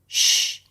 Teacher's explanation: The sh sound is created as the tongue goes back a bit and the lips push forward